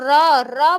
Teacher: और र बोल के देखोगे तो आपका प्रकंपित मतलब कंपन के साथ हमारा र बोला जाता है